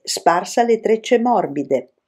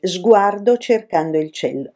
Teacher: in tutte queste parole finali l'accento cade sempre sulla sesta sillaba del verso